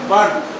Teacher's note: don't speak out R sound followed by consonant.